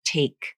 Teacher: Again, you'll see the lips are open and neutral. The tongue is up, wide, flat, sides pushing against the inside of the upper molars. Tip comes up to stop the airflow. · The tongue is up, wide, flat, sides pushing against the inside of the upper molars. Tip comes up to stop the airflow. Vocal cords close. Pressure builds behind the tongue tip and in the throat. Then everything is released. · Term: true T